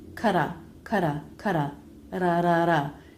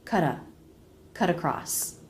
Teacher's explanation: If the next word begins with a vowel, make that a flap T, like in cut across.